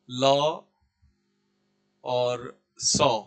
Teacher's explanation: इनका उच्चारण स्थान क्या है? इनका उच्चारण स्थान दंत है।